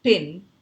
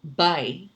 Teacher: In the word pin, you hear only one vowel sound, E sound. Whereas in the word by, you hear two vowel sounds. That's why it's a diphthong in the word by, A and E.